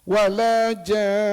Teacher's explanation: Kemudian oleh kerana selepas ja itu nun bersabdu, datanglah wajibul ghunah. Maka kena wajib dengung. Sebab itu kita kena tunjukkan dengung itu bila wakaf. · Ja itu mad lazim kalimi musaqqal enam harakat. Kemudian didengungkan kerana nunnya adalah bersabdu wajib. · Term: wajibul gunnah